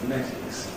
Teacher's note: weaken that to say /fə/ in the first syllable, /fəˈnetɪks/